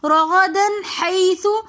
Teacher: رغدن کے اندر دال کی دو زبر کی تنوین کے بعد حروف ہلکی میں سے ہا رہا ہے تو ہم یہاں پر غنہ نہیں کریں گے